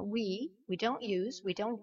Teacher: c'est comme le oui français finalement, sauf que vous l'allongez légèrement.